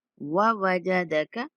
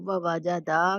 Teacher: کسی بھی لفظ کو نہیں کھینچنا، سب الفاظ سنگل حرکت کے ساتھ ہیں